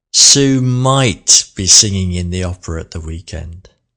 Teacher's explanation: let's put the emphasis on the modal verb might. It's only a possibility.